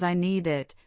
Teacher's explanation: with the sound linking to the vowel in it. This linking can make it challenging to distinguish word boundaries, which is why you might hear I need it as one blurry word.